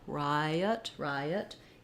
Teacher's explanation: you'll hear there's a little bit of a gliding ya sound there · I says the I diphthong so we have Rye and then letter O is going to be the unstressed schwa · the word Riot is two syllables stressed on the first syllable letter I says the I diphthong so we have Rye and